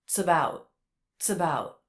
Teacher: he connected the TS sound into the next sound